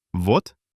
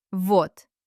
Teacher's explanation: What happens to voiced consonants at the end of a word? They fall asleep and turn into their voiceless partners. So, the letter D at the end of a word should turn into T.